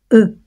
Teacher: la bouche est fermée les lèvres arrondi la langue en avant et la pointe de la langue touche les dents du bas